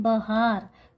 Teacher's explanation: यहाँ पे हा पे विशेष बल दिया गया है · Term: बलाघात